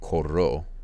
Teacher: I needed to double roll the R there.